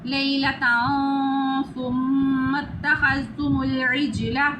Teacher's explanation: وَإِذْ وَعَدْنَا مُوسَىٰ 40، آگے تا کے اوپر 2 زبر ہے یعنی تنوین، ادھر ہم اخفا کریں گے، گلے میں سے آواز نکالیں، اخفا ہو جاتا ہے۔ میم کے اوپر شد ہے، ادھر ہم غنہ کریں گے، ناک میں آواز لے جائیں گے